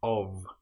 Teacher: but the F in of is voiced